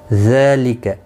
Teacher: زال کے اوپر کھڑی زبر ہے، ایک الف کی مقدار کے برابر کھینچ کر پڑھیں گے